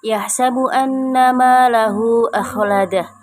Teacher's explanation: Hukum tajwidnya anna itu gunnah musyayyadah karena ada huruf nun yang bertasydid. Cara membacanya mendengung yang disangatkan.